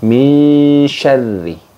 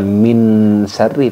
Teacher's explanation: bunyi Nun sukunnya itu udah samar ke huruf bertemunya yaitu itu huruf syin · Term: Ifa ausat